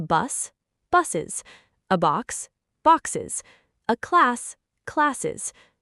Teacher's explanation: Try saying boxes out loud, and you'll physically trip over your own tongue. So English inserts a whole extra syllable, es.